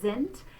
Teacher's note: we're going to say that beginning letter S in the German word that's followed by the vowel sound, we're going to say it like a Z.